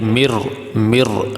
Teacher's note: اب یہاں نون ساکن جو ہے یہ نہیں پڑھا جائے گا، نون ساکن کو را میں داخل کر دیا، اس کا ادغام کر دیا، نون ساکن کا را میں ادغام کر دیا۔ اب یہاں جب پڑھیں گے تو نون نہیں پڑھا جائے گا، یہ را پڑھا جائے گا۔